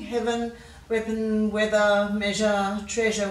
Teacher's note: So pretty much all of those words we're giving a schwa ending.